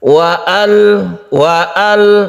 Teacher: ternyata ini bukan hamzah wasal, jadi alnya tetap dibaca. Wa al meskipun ada waw di depannya. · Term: hamzah qata'